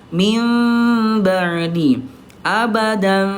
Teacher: Ketika bertemu dengan ba maka berubah menjadi mim yang disertai dengan gunah ada dengungnya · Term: iqlab